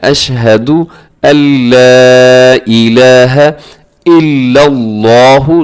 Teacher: नून साकिन के बाद लाम है तो इदगाम के साथ आपने इसको बारीक रखना है